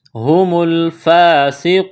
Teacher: ہم الفاسقون، فا کے اوپر کڑا زبر ہے، الف کے برابر کھینچنا ہے، سین میں سیٹی کی آواز پیدا کریں گے، سین کو باریک کرنا ہے۔ قاف واو پیش کو، واو ساکن سے پہلے پیش ہے، واو مدہ ہے، الف کے برابر کھینچنا ہے۔